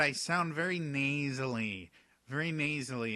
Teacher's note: I'm speaking very much through my nose which is very very common in French